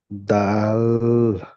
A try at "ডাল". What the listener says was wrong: ডাল। ওই আপনি লটাকে টান করে ফেলছেন, ডাল এমন ভাবে বলছেন, বুঝতে পেরেছেন? লটা একদম টান দেওয়া যাবে না, দাটা টান দিয়ে গিয়ে ল বলতে হবে, দাল।